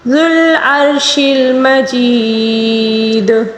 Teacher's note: مجید، یہاں پر پھر یا مدہ ہے، اس کو وہی 3 الف کے برابر کھینچ کر پڑھیں گے، کیونکہ دال کے اوپر پیش ہے، اس کو ساکن کے ساتھ تبدیل کر کے یا مدہ کو ہم نے 3 الف کے برابر کھینچ کر پڑھنا ہوگا